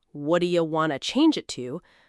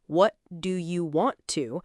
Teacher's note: When I said, "What do you want to change it to?" That was actually five separate words squeezed together. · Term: one connected sound